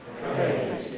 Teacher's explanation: The R is voiceless.